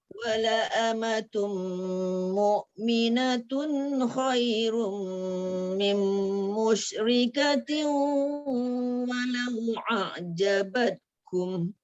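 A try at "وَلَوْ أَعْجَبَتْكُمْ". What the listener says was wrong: Okey, walau tu pastikan hamzah tu jelas dulu. Walau a'jabatkum.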